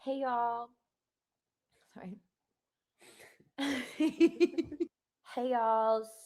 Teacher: She was kind of annoying me with the vocal fry